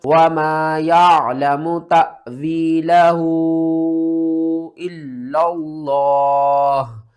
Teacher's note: وقف کی صورت میں ہا کے اوپر جو پیش ہے اس کو بھی آپ نے ختم کر دینا ہے۔ لفظ اللہ سے پہلے زبر ہے تو لفظ اللہ کو ہم نے موٹا کر کے پڑھنا ہے۔